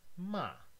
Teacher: 5 1 goes from the highest point to the lowest point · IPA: ma˥˩